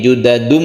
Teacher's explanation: tanwin itu berubah suaranya menjadi mem mati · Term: iklab